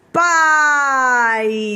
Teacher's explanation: começa alto ó pode prestar atenção o movimento da boca pá a boca totalmente aberta e a boca já vai fechando · Pai onde o a por ser a vogal ela vai ser mais volumosa e o i por ser semivogal ela tem menos força